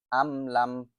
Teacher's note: এখানে মিম স্পষ্ট করে পড়তে হবে। মিম সাকিনের পরে লাম আসছে, মিম সাকিনের পরে তা আসছে।